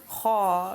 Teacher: Kha is pronounced with a round mouth. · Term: heavy letter